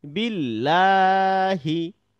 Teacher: যদি জের গিয়ে তথা কাসর গিয়ে আল্লাহ শব্দের লামটিকে ধরে, সেক্ষেত্রে আমাদের হচ্ছে পাতলা করে আকার দিয়ে পড়তে হবে